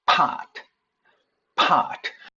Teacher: 보시면은 프가 단어나 음절의 맨 앞에 나올 때 이때는 h를 조금 작게 써도 되는데요. 흐 사운드가 가미가 돼요. 거센 소리입니다.